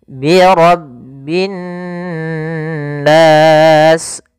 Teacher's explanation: Ro-nya tebal, ditekan kepada huruf ba, bi rabbi. Kemudian di sini ada alif lam syamsiyah, yaitu alif lam yang kita tuliskan tapi dia tidak dibaca, sehingga kita langsung ke huruf nun yang bertasydid.